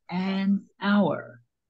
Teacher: the H at the beginning of the word hour is silent. So the first part that's pronounced has a vowel sound, an hour.